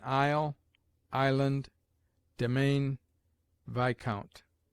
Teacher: S is mute in isle, island, domain, viscount.